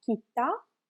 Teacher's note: So we have short vowel sound A, and then a long vowel sound A.